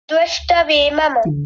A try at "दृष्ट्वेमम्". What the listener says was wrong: दुष्ट नहीं है, दृष्ट है। ये द के नीचे रिकार है, ऐसे दृष्टवेमम्। दृष्ट नहीं, ट भी आधा है, दृष्टवेमम्।